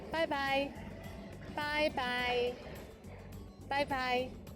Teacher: It sounds like the English bye-bye. But be careful to start with the first tone, bye, followed by another one in the third tone